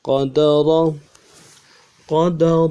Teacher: را کو موٹا پڑھیں گے اور زبان کا بیچ اٹھائیں گے، موٹا ہو جائے گا، پورا ہو جائے گا۔